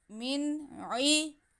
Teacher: نون ساکن کے بعد عین آ رہا ہے جو کہ حرف اظہار ہے، تو ہم نون کی آواز کو اور عین کو واضح کر کے پڑھیں گے